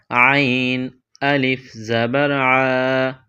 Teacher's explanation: عین کے بعد الف ہے، اس کو کھینچ کر پڑھیں گے